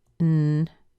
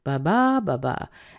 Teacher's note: The first syllable's weak, the second syllable strong, the third syllable's weak, the fourth syllable's weak. So ba-ba, ba-ba.